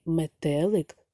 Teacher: в слові метелик наголос падає на другий склад